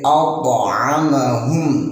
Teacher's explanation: di sini wajib ada pantulannya karena ini hukum bacanya ialah qalqalah sughra